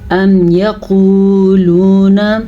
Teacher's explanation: واو ساکن سے پہلے پیش آ گیا ہے تو یہ واو مدہ ہے، اس کی وجہ سے ہم کھینچ کے پڑھیں گے۔ یقو یہ ہم نے کھینچا، لو یہ بھی کھینچا، ٹھیک ہے، کیونکہ دونوں واو مدہ ہیں۔